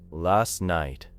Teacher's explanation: the T becomes weak before night, your ear may not connect last night with the written phrase last night.